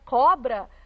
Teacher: na palavra cobra última penúltima a penúltima sílaba tônica é paroxítona